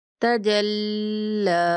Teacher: ہم جیم کو لام کے ساتھ ملاتے ہوئے اس کو کھڑا بھی کریں گے اور اس کی تشدید کو بھی ادا کریں گے